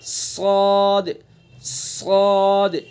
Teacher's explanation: صاد, صاد کا مخرج وہی جو اوپر آپ نے زاسین کا پڑھا ہے. زبان کی نوک ثنا سفلا کا کنارہ اور کچھ اتصال ثنا علیا سے ادا کریں گے.